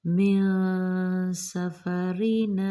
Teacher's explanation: یہاں پہ نون ساکن کے بعد کیا آ رہا ہے؟ حرف سین، تو ہم نے اخفا کرنا ہے